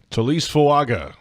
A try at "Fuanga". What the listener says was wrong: It's actually Fuanga. There's an N in there that's in the pronunciation that's not in there. In the spelling.